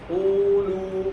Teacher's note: یہیں پر واو کے اوپر واو ساکن سے پہلے پیش ہے، اور یہ لام کے اوپر پیش ہے تو لام باریک حرف ہے، تو لام باریک ہونے کی وجہ سے واو بھی باریک ہو جائے گا، لو پر نہیں ہوگا، او کی طرح.